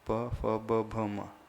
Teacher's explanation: हाँ, पवर्ग में दोनों होठों का प्रयोग होता है, प फ ब भ म। सिर्फ पवर्ग में ही दोनों होठ अपने कांटेक्ट में आएंगे, टच होंगे। क में नहीं होंगे, च में नहीं होंगे, ट में नहीं होंगे।